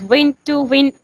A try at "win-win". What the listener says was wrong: And don't say win to win. It's win-win. it's not win to win. It's win-win.